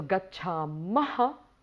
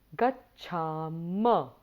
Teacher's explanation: there is no aspirate or the visarga sound at the end